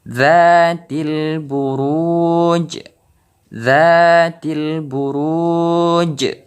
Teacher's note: Jadi huruf jim ini terdengar pantulannya lebih besar karena kita wakaf dalam membacanya. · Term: qalqalah